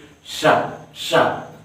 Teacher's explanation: मैं शा बोल रहा हूँ तो मेरे जीभ बीच भाग को छू रहा है, जैसे कि ए वाला भाग ना इस बीच में छू रहा।